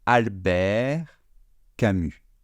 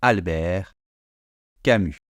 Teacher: Je ne prononce pas le T final, je ne prononce pas le S final.